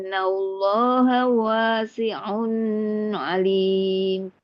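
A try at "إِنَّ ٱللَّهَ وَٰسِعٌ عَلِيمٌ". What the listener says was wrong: Yang terakhir, onnya jangan ke ayun. Wasi'un alim.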